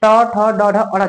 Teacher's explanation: ना तो हमारा जीभ पीछे वाली स्त्री को छू रहा है यानी कि मूर्धा से बोला जाता है ट ठ ड ढ अड़